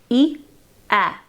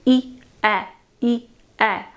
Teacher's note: Notice that as you go from the vowel of e to the vowel of a, your mouth opens.